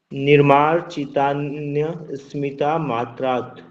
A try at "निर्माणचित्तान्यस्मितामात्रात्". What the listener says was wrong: स्मिता की आपकी अलग से आवाज आ रही है, तो इसको इकट्ठा बोले निर्माण चित्तान्य। आपने रुकना नहीं है उसके बाद, निर्माण चित्तान्य स्मिता, स बोलेगा स्मी, स्मिता मात्रा।